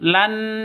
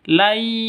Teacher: tanwin bertemu dengan Ya cara bacanya masuk ke ya mud seperti itu la gitu ya bukan Lan tapi Lai masuk